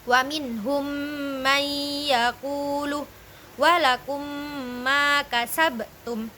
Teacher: Yang kedua yakni ada idgam mlain ialah ketika ada mim sukun bertemu dengan huruf mim maka dibacanya idgham yakni memasukkan memasukkan dengan agak berdengung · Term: idgham mlain, idgham mitlain